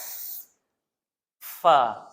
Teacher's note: Fa salli, huruf fa ni macam kita dah sebut selalu, gigi arnab kena duduk atas bibir bawah. Dan angin kena keluar.